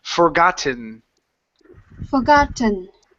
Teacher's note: with an N you're adding a tea you're saying forgotten okay leave your tongue at the top of your mouth to finish the n sound